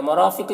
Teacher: रॉ को पुर पढ़ेंगे, अलिफ मद्दा है, इसे एक अलिफ के बराबर खींचेंगे। क़ाफ को यहाँ पर पुर पढ़ेंगे।